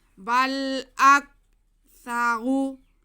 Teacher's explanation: سا کو بہت نرمی سے پڑھنا ہے، سیٹی کی آواز نہ آئے